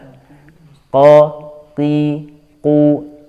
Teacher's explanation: Jadi dari pangkal lidah qi, qu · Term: qaf